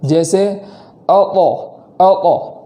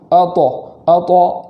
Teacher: طا کو اس طریقے سے پڑھیں گے کہ قلقلہ بھی ہو اور وہ قلقلہ پور کے ساتھ ہو